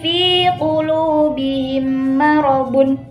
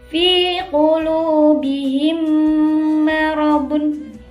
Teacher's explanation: Jadi ketika tadi kan pengertiannya juga ada yang tasdidkan kan, double kan. Jadi itu menyuarakan mim itu rangkap, double, terus kayak ada tasdidnya. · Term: idgham mimi